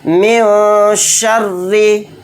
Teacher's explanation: رائے مشددہ کے نیچے زیر ہے تو اس رائے مشددہ کو باریک پڑھیں گے